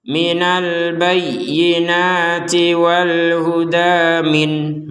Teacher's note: maka nun sukunnya ini dibaca dengan jelas